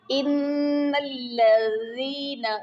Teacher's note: ان کی نون مشدد ہے، یعنی اس کے اوپر شد ہے، تو یہاں ہم غنہ کریں گے